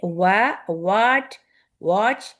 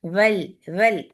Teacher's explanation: یہ وی ہے اور یہ اوپر والے دانت نیچے کے ہونٹ کو لگ رہے ہیں, اور ہم بنا رہے ہیں و, تو یہ غلط ہے.